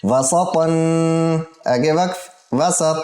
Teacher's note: दो ज़बर को एक अलिफ की मिक़दार लंबा करेंगे वक़फ़ की सूरत में